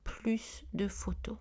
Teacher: Et quand on utilise de, le S est prononcé